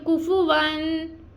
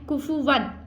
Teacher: ہم نے غنہ نہیں کرنا